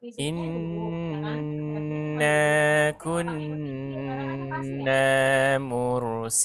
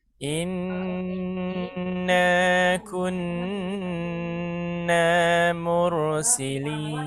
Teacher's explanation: Jadi bunyi n-nya itu harus sampai 3 ketukan. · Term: Nun tasydid